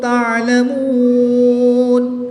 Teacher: یہاں پر غنہ کر کے پڑھیں گے. وقف کی حالت میں یہاں پر مد عارض ہوگی. 2 سے 3 الف تک کھینچ کر پڑھیں گے.